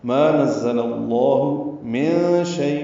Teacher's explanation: نون ساکن کے بعد شین آنے کی وجہ سے اخفا ہے، نون کی آواز چھپائیں گے